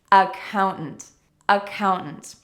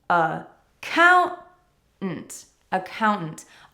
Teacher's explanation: The first career for us to practice is accountant accountants, the important thing here to note is that the second syllable is stressed and that means that the other parts of the word are weak